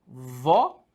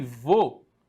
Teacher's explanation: Perceba que uma marca, né, dentro dessa acentuação, uma marca, uma sonorização mais aberta e a outra ela marca dentro dessa sílaba uma sonorização mais fechada.